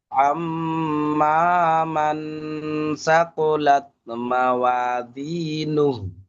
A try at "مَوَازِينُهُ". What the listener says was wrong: মাওয়াজিনু একটু ঝাড় ঝাড় মানে সিটি মতন আওয়াজ হবে। মাওয়াজিনু, এটা যা আছে। জাল, জাল হলে আপনি যেমন পড়ছেন ঠিক আছে, কিন্তু এখানে যা।